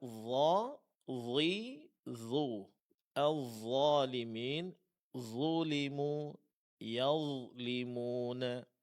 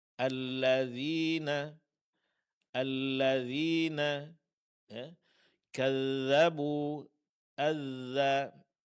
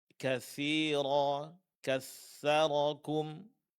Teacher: 3 huruf yang keluar dari ujung lidah dengan disentuhkan pada ujung gigi seri atas